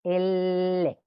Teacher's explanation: se articula mediante el contacto de la punta de la lengua y los alvéolos, que es la cavidad o hueco de nuestro paladar, ¿ok? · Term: apicoalveolar lateral